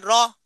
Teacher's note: জিহ্বার অগ্রভাগ কম্পিত করে কম্পনজাত একটি বর্ণ উচ্চারিত হয়, র। হ্যাঁ, এটা হচ্ছে কম্পন বর্ণ।